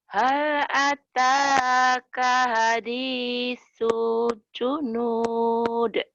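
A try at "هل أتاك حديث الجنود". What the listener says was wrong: Hal ataka ha kecil. Hadisul junud. Ayo lagi.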